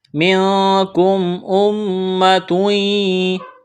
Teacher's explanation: میم مشدد ہے، غنہ کریں گے، آواز ناک میں چھپائیں گے۔ تنوین کے بعد یا ہے، یہاں پر ادغام کریں گے غنے کے ساتھ۔ · میم ساکن کے بعد حمزہ ہے تو یہاں پر اظہار کریں گے۔